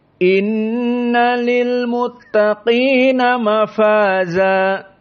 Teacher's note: inna di sini wujubil gunnah karena nun musyaddadah